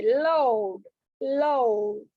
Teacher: లౌడ్, లౌడ్ అనే sound ఇచ్చేటప్పుడు మన నాలుక పైన పళ్ళ మీద ఉన్న అంగిటికి తగులుతుంది